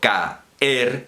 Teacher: Pero en español, ae no es un diptongo, de modo que si yo digo caer, son 2 sílabas tal cual, porque ahí no hay ni I ni U, no hay diptongo